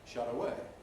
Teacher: what the Americans do, and sometimes British people as well, is not only have no aspiration, but allow the voicing to continue